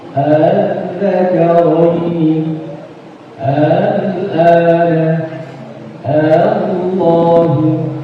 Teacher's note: Tashil di sini adalah hamzah pertama dibaca jelas, sedangkan yang kedua dibaca samar antara hamzah dan alif.